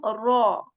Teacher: this is not an empty mouth sound this is not a light sound but rather this is a heavy sound of raw